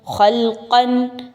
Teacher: خا اور قاف دونوں حروف مستعلیہ میں سے ہیں، اس کی وجہ سے درمیان کی جو لام ہے وہ موٹی نہیں ہونی چاہیے